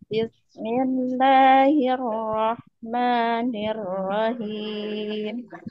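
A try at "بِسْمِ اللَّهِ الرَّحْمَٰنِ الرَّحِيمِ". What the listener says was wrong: Ya, lebih turun. Bismillahirrahmanirrahim. Nah, nirrahim turun. Him.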